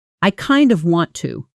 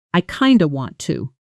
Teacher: Spoken naturally, kind of often shrinks down to something closer to kinda, light and fast.